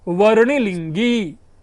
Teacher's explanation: दो ह्रस्व एक दीर्घ कॉन्टिन्यूसली आपको बोलना पड़ रहा है